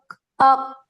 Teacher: میری جو root of the ٹنگ ہے وہ ایک سافٹ پیلٹ کو ٹچ کر رہی ہے جو کہ حلق کے اندر موجود ہوتی ہے، اق، اق، تو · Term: روٹ آف دا ٹنگ ٹچنگ